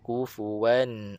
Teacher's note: hakikatnya dia ada dengung tapi tak banyak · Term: dengung yang kurang sempurna